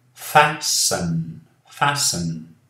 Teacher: Aqui não falamos o T.